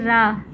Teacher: इसमें मुख द्वार जीभ की नोक से शीघ्र ही बंद होता है और दो तीन बार खुलता है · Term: लुंठित